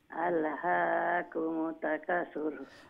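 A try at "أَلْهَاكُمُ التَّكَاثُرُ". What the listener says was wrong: আলহাকুমুত, তার উপরে তসদিদ নাইনি, তো তা কয়টাই কেন? দুইটা, তো দুইটা তা উচ্চারণ করা লাগবো, যেন আলহাকুমুত মিম তাফির মুত হইলমু, তো একটা উচ্চারণ হলো, এরপরে তাকাসুর, আলহাকুমুত তাকাসুর। তাকা তাকা তা লম্বা করবা না, আলহাকুমুত তাকাসুর।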